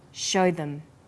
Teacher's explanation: show is stressed and them is unstressed so we say show them this is vowel and consonant linking